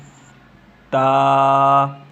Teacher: زبان کی نوک اور سامنے کے اوپر والے 2 دانتوں کی جڑ سے ادا ہوتے ہیں